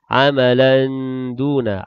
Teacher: tanwin bertemu dengan dal ikhfa hakiki dengan sekadar dua harakat